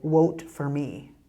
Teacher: people who are from India, they don't have the V sound in their language, so they use a W.